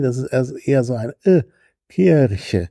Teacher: Also ein kurzer, leicht in Richtung halb geschlossen neigender Vokal.